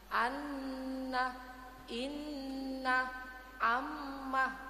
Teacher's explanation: tadi bacaan ghunah nun bertasdid dan mim bertasdid ya dibaca mendeng mendengung jadi kira-kira satu Alif atau dua harakatlah Bu tekanan untuk mendengungnya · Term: Bacaan gunnah